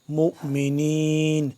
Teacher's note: ہلکا سا جھٹکا ہوگا کیونکہ یہ اس کے اوپر واؤ کے اوپر آپ کو نظر آ رہا ہے چھوٹا سا حمزہ